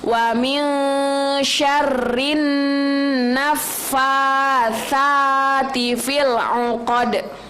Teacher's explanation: Nah, di situ nun mati nunnya itu bertasydid. Jadi harus di gunnahnya itu harus ditekan dulu.